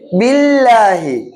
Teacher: சொல்லுங்க அல்லின மெல்லினமா >> மெல்லினம் ஏன் மெல்லினம் முன்னுக்கு என்ன வந்துருக்கு கஸ்ரா அல்லாஹ்வுடைய லாமுக்கு முன்னுக்கு கஸ்ரா பெற்று வரும் என்றால் அல்லாஹ் என்ற வார்த்தையை மெல்லினமாக உச்சரிக்கணும்